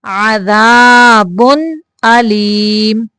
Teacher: یہاں پہ اظہار کرنا ہے، تنوین پہ غنہ نہیں کرنا